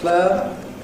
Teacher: A word like ‘player’ [ ˈpleɪə ] can have internal smoothing and can become [ ˈpleə ].